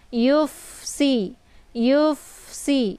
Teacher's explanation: Jadi ketika 2 huruf tersebut beradu dalam satu kalimat ya dan bertemunya secara berhadapan, maka fa ini desis anginnya agak sedikit samar ya, tapi dialirkan bukan cara dipantul ya. Kemudian si ini anginnya lebih jelas dan bacaannya tipis.